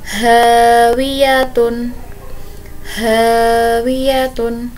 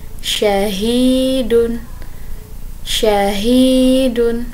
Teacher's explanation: Huruf H ini memiliki sifat samar-samar, kemudian perlahan, kemudian turun, terbuka, dan menahan.